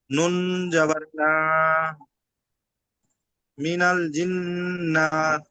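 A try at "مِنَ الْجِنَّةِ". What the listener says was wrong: জিম নুন জের জিন, নুন জবর না, নুন জবর না টান হয়ে যাচ্ছে, টান হবে না একদম।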